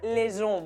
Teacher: Esa H no impide la liaison. Pronunciamos esa S porque después tenemos una vocal.